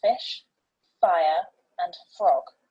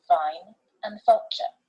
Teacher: these two are known as the labiodental fricatives and as the name suggests involve the teeth and the lips